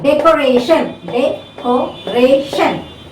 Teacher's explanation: This is the second last syllable from the back. So the stress is on the penultimate syllable.